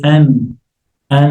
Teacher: When you say an an so the the tip of the tongue is rising to touch the upper mouth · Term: noon